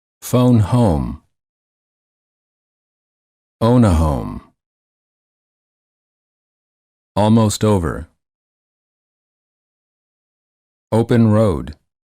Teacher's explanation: the lips are very rounded and tense and the tongue is a bit tense and it moves from the mid-high to the high position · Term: o as in boat